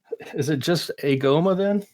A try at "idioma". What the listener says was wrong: It's with a soft G.